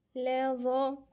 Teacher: الظاء هنا من الحروف اللثوية